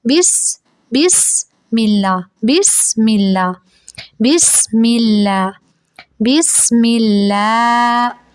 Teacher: لام پہ کھڑا زبر ہے تو اسے تھوڑا سا لمبا کریں گے ، اللہ کا لام موٹا نہیں پڑھا جائے گا کیونکہ لفظ · سین کی آواز کو ہلائیں گے نہیں اور سین کی آواز کو سیٹی کی سے آواز سے ادا کریں گے